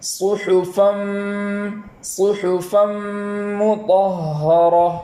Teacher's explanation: ادغام اس طریقے سے ادا کریں گے کہ وہاں ایک الف کے برابر گنہ بھی ہو